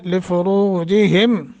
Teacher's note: را کو موٹا کر کے اور ایک الف کے برابر کھینچنا ہے چونکہ حروف مدہ بنتا ہے